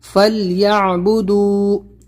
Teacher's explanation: فلیعبدو، دال واو پیش دو، تھوڑا سا لمبا کرنا ہے، حروف مدہ ہے یہاں پر اور عین کو نکالنا ہے